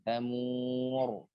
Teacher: Nah, takrir dalam dia mufakham atau mufakham, ya dia takrir bergetar yang ditebalkan